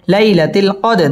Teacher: জবরের বাম পাশে জজম ওয়ালা ইয়া, লিনের হরফ তাড়াতাড়ি পড়তে হবে। লাইলাতিল কদ, দাল কলকলার হরফ ধাক্কা দিয়ে পড়তে হবে।